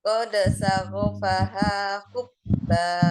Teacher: Ya, jadi menjadi mad iwad ya. Jadi fathah tanwin menjadi fathah 2 harokat dibacanya.